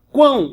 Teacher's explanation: E quando você fala quão, olha o que acontece. O U, ele é pronunciado, é uma semivogal.